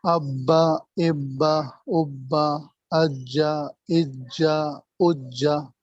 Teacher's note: با کے اوپر تشدید ہے نا تو یہ با کا تلفظ 2 مرتبہ ہو رہا ہے، ایک مرتبہ ساکن اور ایک مرتبہ حرکت کے ساتھ، ایک مرتبہ سکون کے ساتھ، ایک مرتبہ حرکت کے ساتھ.